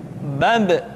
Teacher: Ketika mati, maka terdengar suara pantulan.